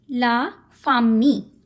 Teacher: ਸੋ ILL ਦੀ French ਦੇ ਵਿੱਚ always sound ਰਹਿੰਦੀ ਹੈ ਈ. ਲ ਸਾਊਂਡ ਹੀ ਨਹੀਂ ਆਉਂਦੀ.